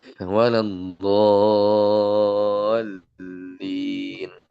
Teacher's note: Jadi waladdallin itu tetap 6 harokat ya. Meskipun ada alif sukunnya cuma 2.